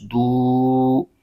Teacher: دال پر پیش ہے اور آگے واو ساکن ہے، تو واو ساکن سے پہلے پیش آ جائے تو واو مدہ ہو جاتا ہے، اس کو پھر ایک الف کھینچ کے پڑھنا ہوتا ہے